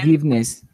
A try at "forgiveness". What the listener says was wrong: Here the E doesn't have any sounds, and this is not J, is G.